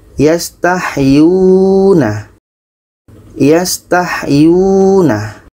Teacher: Yu ini dibaca panjang karena ada waw mati sebelumnya baris depan.